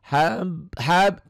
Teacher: nyamber dan dobel karena wau ini bagian dari idgom bunah maka bukan hanya nyamber dan dobel saja tapi ada dengung ke hidung ada ditahan